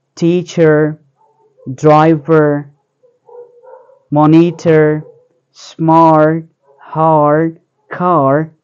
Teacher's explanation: the R sound is pronounced clearly whenever it appears in a word, regardless its position. It means that the speakers of the rhotic pronunciation will articulate the R sound, whether it is before or after a vowel or a consonant sound.